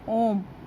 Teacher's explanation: प्लुत स्वर में तिगुना समय लगता है। इन्हें बोलने में ह्रस्व स्वरों के उच्चारण में तिगुना समय लगता है।